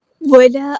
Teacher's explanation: الف مد آیا 2 کاؤنٹ لمبا کرنا ہے